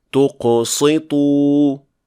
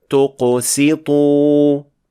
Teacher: تیسرا، جب سین موٹے حروف کے قرب و جوار میں ہو تو اگر آپ توجہ نہ دے رہے ہوں تو اسے صاد پڑھا جا سکتا ہے، جیسے کہ مثال کے طور پر اس لفظ میں تقسطوا. یہاں سین کا غلط تلفظ کر کے اسے صاد پڑھ دیا گیا کیونکہ یہ قاف اور طا سے متاثر ہو گیا تھا جو کہ دونوں موٹے حروف ہیں، جبکہ اس کا تلفظ اس طرح کیا جانا چاہیے۔